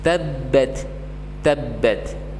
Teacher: di sana huruf ba terdapat hukum tasydid ataupun syiddah, sehingga huruf ba ditahan sebanyak dua huruf